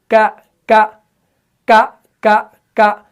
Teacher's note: तो इसी ट्रिक के तौर पर आपने इसको सीखना है और महसूस करना है कौफ के वक्त क्या होगा कि वहां पर ऊपर का जो नरम तालू है वो जुबान के पिछले वाले हिस्से से चिपक जाएगा, लेकिन काफ में ऐसा नहीं होगा। यानी काफ में क्या होगा, जुबान का जो पिछला वाला हिस्सा होगा वो ऊपर के सख्त तालू से लगेगा · तो मालूम हुआ कि काफ का जो मखरज है वो जुबान का पिछला वाला हिस्सा जब किससे लगे, सख्त तालू से लगे तो काफ अदा होता है।